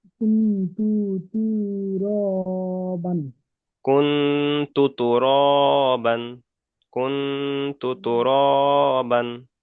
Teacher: নুন তাই সাকিনের পরে হুরুফে ইকফার 15টি অক্ষরের মধ্যে থেকে তা এসেছে, তাই নুন সাকিনের আওয়াজকে নাকে তুলে একালি পরিমাণ গণনা করে পড়তে হবে। তার উপরে পেশ এসে, পেশটি হলো হারাকত, হারাকতের পরাকে তাড়াতাড়ি পড়তে হয় টান দেওয়া নিষেধ।